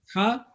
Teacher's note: Ha, sharp sound, Ha, middle of throat